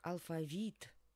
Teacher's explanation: алфавит, конечно, на «и» падает ударение